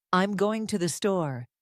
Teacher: notice how the words going and store are stressed while I'm to and the are softer and quicker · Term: sentence stress